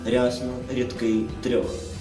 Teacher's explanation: якщо стоять і я ю є м'ягкий знак то р вимовляється м'яко